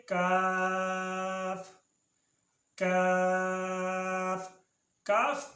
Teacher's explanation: کاف کاف ادا ہوتا ہے زبان کی جڑ جب سخت تالوں سے لگے